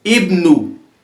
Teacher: We can notice this Hamza, it is being pronounced as E at the beginning of Ibnu.